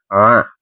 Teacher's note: ini termasuk salah satu dari huruf yang enam huruf halq yang keluar dari tenggorokan A coba teman-teman ya A nah a kan letaknya tuh dari tenggorokan a maka dinamakan pembacaan izhar halqi alaihimila.